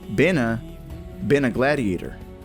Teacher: And this links to the word ever, forming the sound there's ever. Next, we hear the N sound from been linked to a gladiator. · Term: connected speech